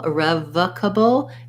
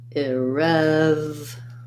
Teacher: it's a schwa because in irrevocable, we have stress on the rev syllable. So it sounds like I, rev, cable.